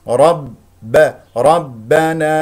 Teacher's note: رب يقول ربنا راء مفخمه لان مفتوحه الباء مشدده تذكر ان الباء حرف شديد مجهور لا يجري فيه الصوت ولا يجري فيه النفس